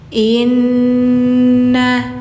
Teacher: bacanya didengungkan dulu, ditahan dulu ya. Karena gunah gunah musyaddadah. Nun bertasydid bacanya diungkan.